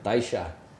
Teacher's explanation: So that double L becomes a sh sound.